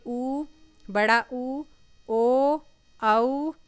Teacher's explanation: होठ जो होते हैं वो गोल हो जाते हैं।